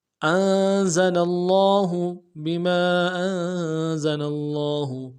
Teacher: کو نون ساکن کے ساتھ ملانا ہے، نون ساکن میں غنہ کریں گے، زا کی سیٹی باریک ہوگی · لفظ اللہ کے لام کے اوپر کھڑا زبر ہے، تشدید بھی ہے، تشدید کو زور دیں گے ، کھڑا زبر کو ایک الف دال میں کھینچیں گے، ہا